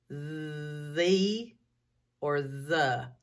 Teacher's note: do you feel your vocal cords vibrating that means it's voiced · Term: voiced sound